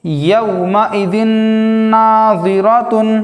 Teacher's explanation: تنوین کے بعد حروف یرملون میں سے نون آنے کی وجہ سے غنہ کے ساتھ پڑھیں گے